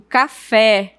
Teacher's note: o e ele é pronunciado de uma forma mais aberta